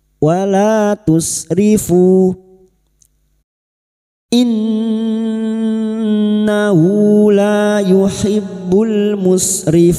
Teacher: Innun yang bertasdid gunna musyaddada kita dengungan selama 3 harokat